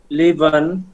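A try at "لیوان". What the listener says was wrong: একটু খেয়াল করেন লিভন একটা ওয়াও লিভন হ্যাঁ লিভন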